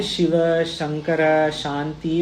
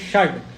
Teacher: जो षड है मूर्धा से पीछे से आ रहा है, मूर्धा। तो ये सूत्र क्या, ष्टुनाष्टु क्या बोल रहा है, वैसे ही कंपैरिजन कर सकते हैं आप। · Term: मूर्धन्य शकार